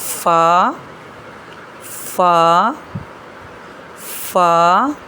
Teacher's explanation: अदा करते हुए नीचे वाले होठ पर एयर सी महसूस होगी। · फ जो है ऊपर के सामने वाले दो दांतों की नोक के नीचे होठ के अंदर वाले गीले हिस्से पर लगाते हुए पढ़ते हैं। यानी ऊपर वाले दांतों का किनारा नीचे वाले होठों के अंदर वाली साइड से लगेगा तो फ अदा होगा। यह नरम लेटर है।